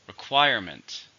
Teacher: How many syllables are in requirement? 3. Stresses on the second.